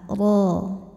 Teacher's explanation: huruf ro ini dibaca secara tafkhim karena harakatnya tanwin fathah maka kita bunyikan rnya dengan tebal